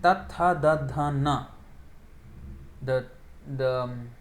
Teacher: The tongue is at the dentals. These are called dentals. Dental sound. Just behind the teeth.